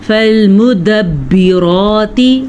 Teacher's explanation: را کو پر پڑھنا ہے کیونکہ را کے اوپر کھڑی زبر ہے